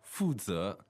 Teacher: so that's fourth tone, second tone